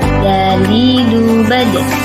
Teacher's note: keluar dengan cara menyentuhkan ujung lidah kita ke gusi bagian atas dalam keadaan mati huruf da terdengar suara memantul